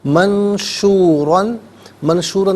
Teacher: منشوراً میں نون ساکن ہے، اس کے بعد شین حرف اخفا ہے تو نون ساکن پر یہاں اخفا کیا جائے گا۔ را پر دو زبر کی تنوین ہے، پر کر کے پڑھیں گے۔